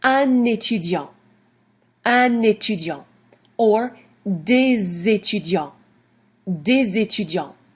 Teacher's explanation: if des is followed by a noun that begins with a vowel sound, then we pronounce the S like a Z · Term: liaison